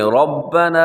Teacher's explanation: اس میں را موٹا ہے کیونکہ را کے اوپر حرکت ہے